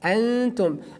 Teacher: Just we pronounce here Noon, but not very frankly. We like we hide it. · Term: Ikhfa